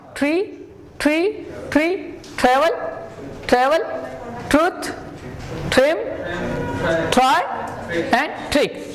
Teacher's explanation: you can say tree, a little bit cha sound or ta sound